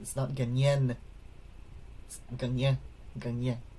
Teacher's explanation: when it's at the end of a section of a word, or at the end of a word, it's more nasalized